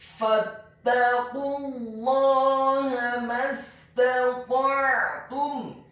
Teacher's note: huruf ain-nya dibaca sukun, ditekankan keluar dari tenggorokan bagian tengah